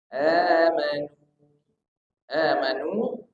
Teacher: Di situ ada hamzah bertemu dengan alif. Amanu ini namanya a-nya mad badal, panjang 2 huruf. · nu panjangnya juga 2 harokat. Ini mat tabi'i, panjang 2 harokat karena waw sebelumnya dhammah.